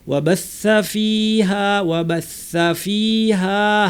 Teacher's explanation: বিহিল আরদা বা'দা মাউতিহা ওয়া বাসসা ফিহা, ওয়া বাসসা বলার সময় জিহ্বা শীর্ষ উপরের দাঁতে শীর্ষে লাগিয়ে প্রচুর বাতাস বের করতে হবে , বাসসা আওয়াজ থাকবে, বাতাস থাকবে, ওয়া বাসসা ফিহা, ওয়া বাসসা